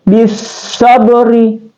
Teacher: Jadi di sini qalqalah sugra ya. Di sini ada rab yang tarkik atau tipis.